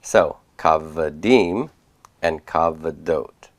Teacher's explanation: in each case they're going to reduce to vocal shava, and the long A will be retained under root 1, and the metheg will be there to disambiguate that, or at least we're going to put it here in our paradigm.